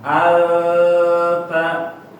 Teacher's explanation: Jadi bacaannya kalau yang betul dia bukan ke ang tapi a. Lidahnya siap-siap ketemu makhrajnya ya. Lagi terbang dia lidahnya mau nyentuh.